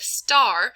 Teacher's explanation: So for instance, a child might say tar instead of star until they can coordinate the movements of the s to the t, because we have that flow of air moving into an explosion of the air with our s into a t